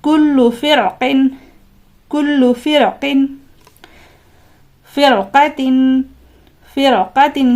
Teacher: کر کے پڑھنا ہے، ام اعتبوا کل فرق، یہاں پر دیکھیے را ساکن کے بعد حروف مستعلیہ میں سے قاف ہے، لہٰذا اس را کو بھی پر پڑھنا ہے